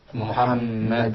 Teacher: But the mim, there is a complete itbaq, or closing of the lips. The 2 lips.